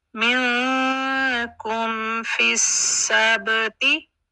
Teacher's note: सीन को अपना मखरज clear करेगा, सीन में सीटी डालेगा और अपना टाइम कंप्लीट करके आगे फिर सीन बा के साथ मिलेगा और बा को कलकला है।